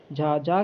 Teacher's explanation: आपका सघोष भी है और महाप्राण भी है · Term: सघोष महाप्राण व्यंजन